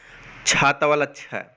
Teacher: तो छ का जो उच्चारण स्थान होता है वो है तालव्य